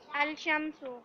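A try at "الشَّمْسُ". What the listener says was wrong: अशम्सु, ये जो हरूफ शम्सिया इनमें लाम साइलेंट है।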